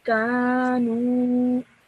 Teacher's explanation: make sure you stretch the nu sound out for 2 seconds because of the vowel madda